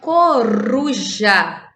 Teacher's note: dizemos que nessa palavra o R tem um som fraco, ele está entre vogais, mas uso um R só, ok?